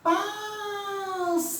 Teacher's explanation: Sílaba tônica, paz. Ela é a antepenúltima, ó. Última, penúltima, antepenúltima. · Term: Proparoxítona